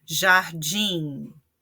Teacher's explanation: Jardim, din é a sílaba tônica, então uma palavra oxítona.